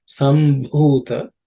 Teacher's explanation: the Bhu in the Sambhu is the fourth letter in the Pavarga, so it has to be aspirated